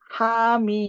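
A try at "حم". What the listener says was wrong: Betul, mumtaz. Masya Allah.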